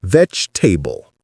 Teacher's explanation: You can also think of it as vegetable almost. The g and the e blend into a ch sound. Sometimes vegetable or vegetable both work.